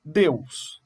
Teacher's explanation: Deus é uma sílaba só. Eu não separo o E do U. Portanto, é um ditongo.